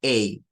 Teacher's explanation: no es el mismo sonido del español Este es un sonido más corto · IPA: /eɪ/